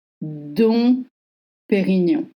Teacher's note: Don't voice the M and remember, GN makes the sound ñ like in onion.